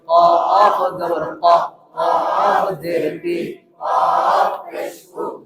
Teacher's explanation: জিহ্বার গোড়া থেকে মোটা ভাবে আদায় হবে